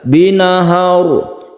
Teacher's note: sukun ro yang sebelumnya ada fathah ini dibaca tafkhim atau mufakham atau dibaca tebal